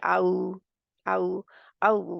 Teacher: इसका मखरज होंठों की गोलाई है। होंठों को गोल करने से आता है, जैसे ओ सा ओ थोड़ा सा ना ओ की शक्ल सी करने से अदा होती है, जैसे आऊ, आऊ, आऊ वाला। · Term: वाओ गैर मदिया